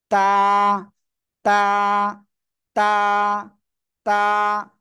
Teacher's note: গোড়ায় লাগাবেন জিহ্বার আগাটা এভাবে ঠিক দেখেন এভাবে লাগবে ঠিক আছে জিহ্বার আগা সামনের উপরে দুই দাঁতের গোড়ার সঙ্গে লাগাবেন লাগিয়ে এক আলিফ টেনে উচ্চারণ করেন তা সবাই একসাথে জোরে জোরে